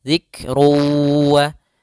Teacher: ketika huruf Kaf sukun ada sifat hamasnya dialirkan sedikit